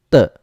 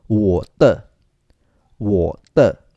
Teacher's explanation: it is pronounced as letter T without air